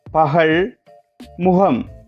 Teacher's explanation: இச்சொற்களை உச்சரிக்கும் போது இங்கு ககரம் ஹ என்ற ஒளியிலேயே ககரம் ஒலிக்கின்றது